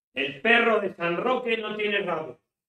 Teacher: La R, el vibrante múltiple que tenemos en nuestra lengua, no existe en inglés.